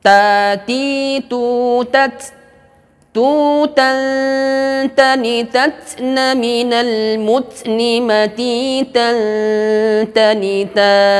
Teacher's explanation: Huruf ta ini makhrajnya adalah dhahru ra'sil lisani wa usul thanayal ulya. Jadi huruf ta ini ujung lidah kita menempel kepada pangkal gigi seri atas, menyentuh pangkal gigi seri atas kita, dan sifatnya adalah syiddah juga, tertahan.